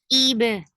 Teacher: For kasra, give e sound. Hamza should be pronounced from your throat, and the sound should be very sharp. Ib. Ba will get sifa of qalqala, and qalqala is tiba'ud.